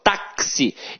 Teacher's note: o X aqui tem som de KS, ou seja, uma letra tem 2 sons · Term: dífono